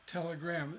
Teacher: telegram is 3 syllables, but there's an accent still on the last syllable